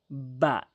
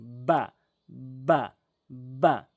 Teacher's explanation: এরপরে আসুন বা বা অর্থাৎ দুই ঠোটের ভেজা অংশ মিলিত করে বুঝবেন কথাটি। দুই ঠোটের ভেজা অংশ মিলিত করে বা এভাবে উচ্চারণ করবেন।